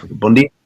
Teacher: That's weird how they pronounce N. They pronounce N like M.